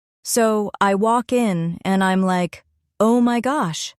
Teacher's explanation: Their voice rises when they're excited and falls when they finish a point.